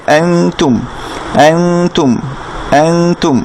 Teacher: তাহলে প্রথমে ছিল আন, তারপর হচ্ছে তুম। এখন এটাকেও গুণনা করে পড়তে পারি আমি চাইলে, যেহেতু নুন সাকিনের পরে তা আসছে